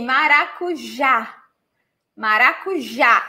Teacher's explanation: And the stressed syllable is the last one.